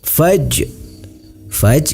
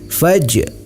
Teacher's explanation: Ni, mad tabi'i, dibaca panjang sebanyak 2 harokat. Faj ini adalah qalqalah sughra. Cara membacanya yaitu huruf jim dipantulkan.